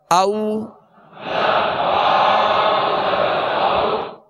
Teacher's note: تو یہ واو لین کا قاعدہ ہے، اس کو بغیر کھینچے بغیر جھٹکا دیے نرمی کے ساتھ معروف پڑھیں گے